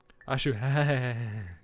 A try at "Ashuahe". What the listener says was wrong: No, Ashuahe. No, Ashuahe. Too many syllables, it's just two. Four, actually.